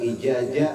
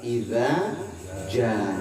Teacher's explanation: yang pertama digigit tipis za, yang kedua tebal ja, iza ja ya.